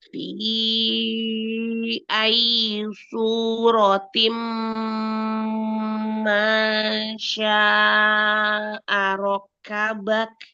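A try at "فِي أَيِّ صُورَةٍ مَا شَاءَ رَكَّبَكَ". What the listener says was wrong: Dan kepanjangan matobi'i. Fi ayyi suratim masya'arokabak. Ya, ayyi kasrohnya selesaikan ayyi ayyi. Selesaikan kasrohnya ya.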